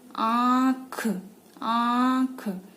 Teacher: जैसे आंख, आंख, आप बोल के देखिए, उच्चारण करके देखिए, तो आपको खुद ही, क्योंकि आंख में चंद्र बिंदु का प्रयोग किया जाता है, तो आपको खुद ही महसूस होगा कि जो आप बोल रहे हैं नाक और मुंह दोनों से ही उसका उच्चारण हो रहा है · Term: अनुनासिक